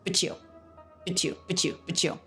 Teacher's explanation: the T combines with the U, this happens, ending T, beginning Y consonant, into a CH.